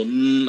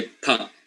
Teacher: they are divided into bilabials or labo dentals baval sounds are the sounds that are produced by blocking the air with both the upper and the lower lips